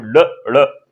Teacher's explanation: जीभ वो पहले मूर्दा से टच होती है। उसके बाद फिर झटके के साथ बाहर आती है। · ये मूर्धा से उत्पन्न होते हैं, यानी मूर्धन्य से उच्चारित किए जाते हैं दोनों ये। और साथ ही अगर मैं सगोश या अघोष की अगर बात करें, तो ये दोनों ही क्या है आपके, ये दोनों ही आपके सगोश हैं। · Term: उच्छिप्त व्यंजन, उच्छिष्ट व्यंजन